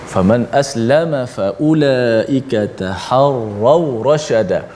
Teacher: Sempurnakan bacaan tafkhim ataupun tebal huruf ra dalam ayat ini, yang mana ra yang berbaris di atas.